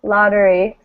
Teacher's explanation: so that means this syllable the second syllable with the e in it is not stressed right so it becomes uh so it becomes the neutral vowel